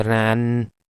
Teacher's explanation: then velum is lowered the air is passing through nose · While in this word ran, because n sound is alveolar one, when our tip or blade of the tongue touches the alveolar ridge. So here is the closure.